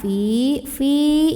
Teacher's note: karena ada Ya Sukun sebelumnya kosroh bacanya panjang dua harokat